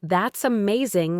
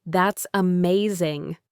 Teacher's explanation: I would say, That's amazing, with my voice rising and falling to show my excitement.